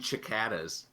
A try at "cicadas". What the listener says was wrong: Where is there an H in that word?